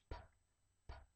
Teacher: you cannot feel the vibration because it is unvoiced